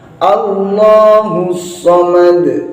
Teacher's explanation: Jadi yang tebal juga lamnya, bukan hamzahnya